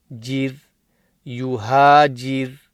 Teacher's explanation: Jeem with a Ra, and Jeem has a Kasra and joining the Ra, so it's Jir, Jir. Here the Ra will be read empty mouth because of the Kasra on the Jeem.